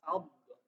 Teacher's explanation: itu maksudnya baik dari suara ataupun dari lidah juga itu menyebar huruf Dod itu menyebar ya suaranya